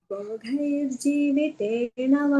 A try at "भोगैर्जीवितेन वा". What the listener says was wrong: Bhogai, no. Bhogair. Not bhogai. भो महाप्राण गल्प प्राण भो गैर